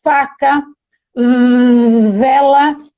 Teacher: o F e o V, por exemplo. Faca, vela, então elas são labiodentais e a gente chama de fricativas